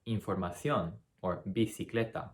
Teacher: in spain c before an i or an e is essentially like the th in the word thing in english it's that infamous spanish lisp so you can hear it in